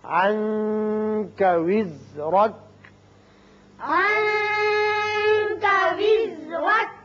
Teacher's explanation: یہاں نون کے بعد کاف حروف اخفا میں سے ہے، یہاں اخفا ہوگا نون پہ اور را کے اوپر زبر ہے، را پر پڑھیں گے.